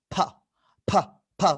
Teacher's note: আর এটা হচ্ছে দুই ঠোঁট থেকে বাতাস বের করতে হবে, ফা, ফা, ফা, হাতে বাতাস লাগা, যেটা যেটা আমরা শুরুতে করলাম, ফা, অর্থাৎ দুই ঠোঁট থেকে হবে ফা, পাবলিক, পেনশন, ফা, ফা।